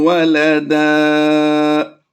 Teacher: دو زبر کی تنوین ہو تو وقف میں اسے الف مدہ سے کنورٹ کرتے ہیں، یعنی ایک زبر کو لمبا کر کے پڑھتے ہیں